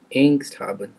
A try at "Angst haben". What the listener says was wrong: Not angst. It's German, not English.